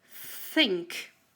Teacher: You need to take your tongue out to mention this sound. Take your tongue out and say think. It sounds like a blow. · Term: unvoiced sound th